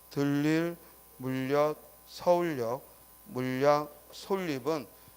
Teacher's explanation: 니은이 첨가되는데 앞에 받침이 리을이면, 공교롭게도 리을이면 유음화가 일어나서 결과적으로 리을이 발음되죠